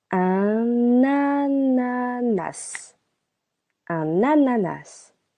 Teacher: Again, we link the preposition un with the word ananas.